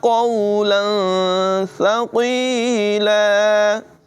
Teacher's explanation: تنوین میں یہاں پر اخفا ہوگا اور سا کی آواز میں سیٹی ہرگز پیدا نہ ہونے دیں